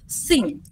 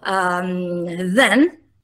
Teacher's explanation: il fonema interdentale sordo e il fonema interdentale sonoro